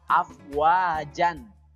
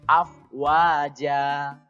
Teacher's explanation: Jadi dibaca panjang 2 harokat, tidak dibaca afwajan, tapi afwaja. 2 harokat saja cukup, tidak boleh terlalu panjang. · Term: mad iwad